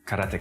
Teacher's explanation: In Japanese, there's no stress on any syllable, so it would be karateka, something like that.